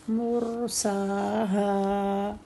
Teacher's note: سا ہا دونوں دو دو حرکت کے ساتھ کمپلیٹ ٹائم کریں گے، برابر سیم ٹائم ہوگا، کمی بیشی نہیں ہوگی۔